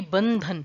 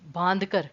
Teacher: बांधकर में ना आपने न पे, नाक से ज्यादा वायु नहीं निकाली, न पे फोकस नहीं किया, सिर्फ आपके गले से एक न का एक न की ध्वनि निकल रही है गले से, बांधकर, ठीक है ना? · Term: अनुनासिक